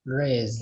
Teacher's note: And the S is pronounced like a Z. So Z. It's not raised, it's raised.